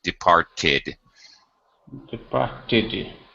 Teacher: The main verb ends with a T. So when we add ed, we actually pronounce the extra syllable.